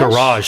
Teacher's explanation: the stress is on the second syllable for American English